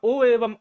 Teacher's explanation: ओ एवं औ का उच्चारण स्थान कंठोस्थ होता है